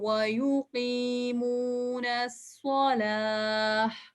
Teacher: ہم نے وقف کرتے ہوئے راؤنڈ تا کو, جس کو عربک میں تائے مربوطہ کہتے ہیں, اس کو ہم ہا میں چینج کر دیتے ہیں